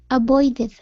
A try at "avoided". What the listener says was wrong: All right, now here, give me a good V sound instead of a boy. Okay, avoid, and then D's.